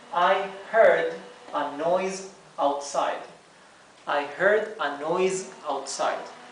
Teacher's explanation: Aquí lo he escrito con Z, aquí una Z, porque noise, que significa ruido, noise, la S final se pronuncia Z